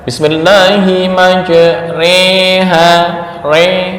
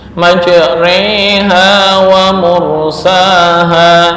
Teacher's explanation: condongnya harakat fathah ke kasrah jadi dibaca fathah juga enggak kasrah juga enggak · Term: imalah